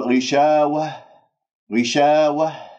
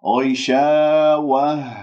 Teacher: تحس بالاهتزاز في منطقة أقصى الحلق، ولا تقول وه وه، لا و و و و بهذه الطريقة.